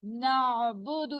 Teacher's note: نعبد اس طرح سے نہیں کرنا، نعبد چلتی رہے گی، یہ آواز رکے گی نہیں. آئین کی آواز رکنی نہیں چاہیے، چلتی رہے گی